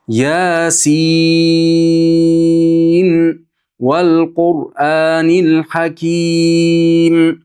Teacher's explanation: Oxirida nun izhor bo'ladi. Izhor degan aniq o'qiymiz nunni. Hafs an Asim min tariq Shotibiyada aniq o'qilinadi.